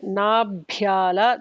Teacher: Nabhyala, the second Bha Mahaprana